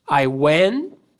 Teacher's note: Esse T parece que a gente corta fora da nossa fala. a gente meio que omite ele.